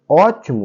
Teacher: a anti penúltima sílaba que é a sílaba tônica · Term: proparoxítona